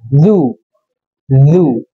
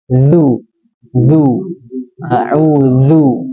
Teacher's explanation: kalau du itu syiddah, suaranya tertahan. Kalau duzu dia rakhawah terseret.